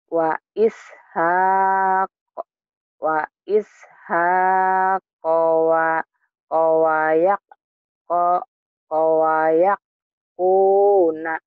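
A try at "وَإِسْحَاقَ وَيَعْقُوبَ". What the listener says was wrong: Kuba titiknya di bawah.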